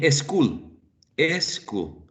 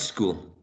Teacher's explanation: combination of sounds in initial position s and t so um spanish speakers tend to add a vowel sound in initial position before or preceding the sounds